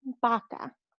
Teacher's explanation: There's never a vroom sound, va, in Spanish. It's always a ba.